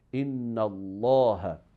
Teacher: So if that one has fatha or dhamma, so the word of Allah will be pronounced with the quality of heaviness.